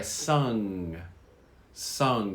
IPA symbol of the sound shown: ŋ